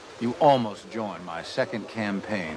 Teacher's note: almost 结尾的 T 没有读出来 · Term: 失去爆破